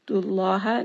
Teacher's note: name of Allah here is heavy because the dal has a dhamma